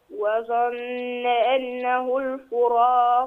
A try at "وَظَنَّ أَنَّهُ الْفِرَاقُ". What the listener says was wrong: لا، الفاء مكسورة مش مضمومة، ما نقولش الفراق، الفي، الفراق.